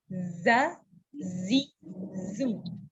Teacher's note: Terdengar menyerupai bunyi jim. Untuk zai keluarnya dari posisi ujung lidah berada di antara gigi atas dan gigi bawah, tapi lebih dekat ke bawah, sehingga posisi mulut kita seperti giginya dirapatkan.